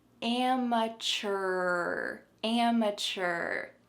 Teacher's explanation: I also want you to be able to have a strong R sound at the end.